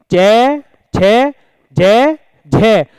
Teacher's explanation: पिछला भाग तालु पर लग रहा है। तालु के स्पर्श से ये उच्चारित हो रहे हैं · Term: तालव्य